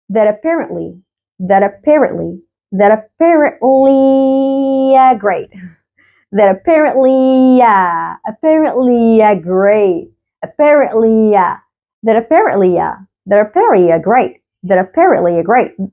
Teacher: فالتي هنا دي قالها كأنها همزة في اللغة العربية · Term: هيلد تي